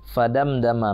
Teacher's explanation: mim mati ketemu da, itu izhar syafawi, jelas dan terang di bibir, tidak boleh dengung